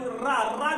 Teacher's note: रा जब बोलेंगे, देखिए जीभ कंपन कर रही है, रा कहलाता है प्राकंपित व्यंजन या लुंठित व्यंजन के नाम से जानते हैं इसको, रा को।